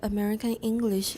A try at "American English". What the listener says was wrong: American, your N. Try to link it. Use this type of articulation because this is mentioned. This has been mentioned, so we don't stress it so much.